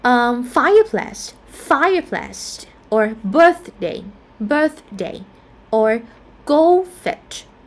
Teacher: we can have like first syllable stress as well for the compound word that we written it as one word